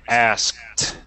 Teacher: We don't say asked it. It's pronounced differently. We say asked. Almost with like a T sound.